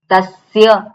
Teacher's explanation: એટલે આપણે જે સ્થાન આપ્યું છે એ સ્થાને જીભ અડે તો એ જ સ નીકળે. દંત્ય સ બોલવો હોય તો જીભ આપણી દાંતને અડવી જોઈએ.